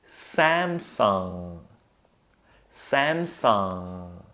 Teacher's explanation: you relax your tongue, no twisting or turning, just relax it and then move it to the back of your throat so the air has to come out of your nose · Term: nasally NG sound